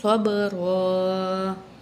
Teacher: صاد کو موٹا کر کے پڑھیں گے، با میں کلکلا ہوگا، صبرا۔ آیت مکمل ہو رہی ہے، 2 زبر تھی، 1 زبر پڑھیں گے، ٹھیک ہے۔